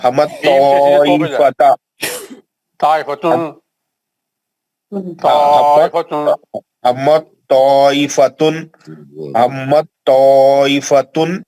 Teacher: تا ساکن کا توئے مشدد میں ادغام متجانسین ہو گیا